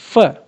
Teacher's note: You will probably notice that the lower lip is touching with the upper teeth. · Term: लेबियोडेंटल्स